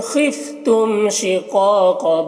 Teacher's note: تم کے میم میں اظہار شفوی ہو رہا ہے، اس میم کو جلد پڑھنا ہے۔